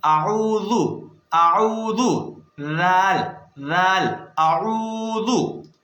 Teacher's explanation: زبان کو دانتوں کے کناروں پر رکھ کر پڑھتے ہیں